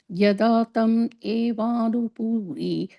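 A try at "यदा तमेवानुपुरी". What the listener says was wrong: And the puri, just a short u, okay? Puri. And the e is long, but the pu is a short.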